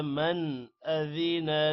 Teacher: من غنہ نہیں کرنا حروف حلقی حمزہ کی وجہ سے